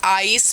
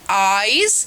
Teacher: A glide from a front open unrounded vowel to a centralized front unrounded vowel just above half close. Front open unrounded vowel.